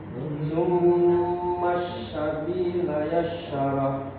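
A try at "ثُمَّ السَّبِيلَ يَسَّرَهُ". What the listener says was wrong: Nah, huruf sin nggak boleh mendesis gitu Pak. Tapi yassar. Sabila yassar. Biasa aja. Sabila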